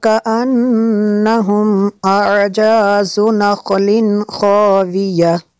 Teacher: اعجاز نخل، خوا کو پر کرنا ہے، اور تنوین کے بعد خوا ہے حروف حلقی میں سے، تو ہم یہاں پہ غنہ نہیں کر سکتے